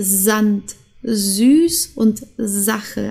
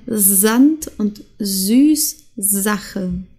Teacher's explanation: ein starkes s ein stimmhaftes s sagen wir auf Deutsch oder ein summendes s wie die Biene summt